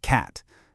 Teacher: That's the sound in cat. It's a really common short open vowel in American English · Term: A vowel